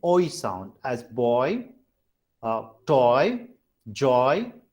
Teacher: there is a glide movement in the tongue position. That's why they are called vowel glides.